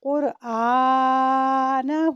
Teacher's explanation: ضمہ اشباعیہ کو واو ساکن کی طرف مائل کرتے ہوئے پڑھیں گے